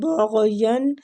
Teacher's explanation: غین بھی مستعلیہ حروف ہے، پور پڑھیں گے